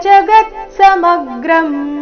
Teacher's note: ಜಗತ್ ಸಮಗ್ರಂ ಶಬ್ದದಲ್ಲಿ ಎಲ್ಲ ಅಕ್ಷರಗಳು ರಸ್ವ ಗ ಮತ್ತೆ ಮ ಮೇಲೆ ಆಘಾತ ಬರಬೇಕು